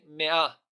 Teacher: in me'ah, the emphasis is on the second syllable